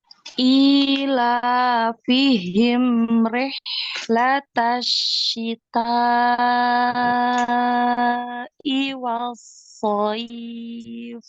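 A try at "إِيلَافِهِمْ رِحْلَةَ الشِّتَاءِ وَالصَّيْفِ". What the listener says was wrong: Dihitung kayaknya kelebihan ya dari 5 ketukan. Kepanjangan. Wasso ini dialirkan juga ya. Wassoif. Wassoif. Ila fihim rihlatasyita'i wassoif.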